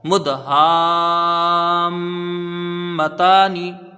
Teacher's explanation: مقدار یہاں پر 3 الف یا 5 الف رکھی جائے گی، میم میں غنہ بھی ہوگا کیونکہ مشدد ہے